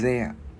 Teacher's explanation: Chữ đờ mình đưa lưỡi qua giữa hai răng ép rung